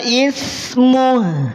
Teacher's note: Ada khofa pada huruf H, jadi ada lirihan suara.